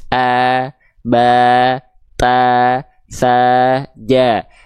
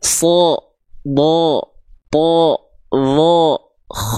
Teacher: sa ja tapi kalau dia termasuk ke dalam huruf yang tebal bunyi vokalnya tidak akan A tapi bunyi vokalnya akan condong pada vokal o